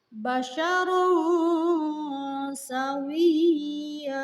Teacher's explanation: Contoh kalimatnya basyarun sawiya. Di sana terdapat tanwin menghadapi sin. Maka tanwin tersebut harus dibaca samar-samar. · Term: ikhfa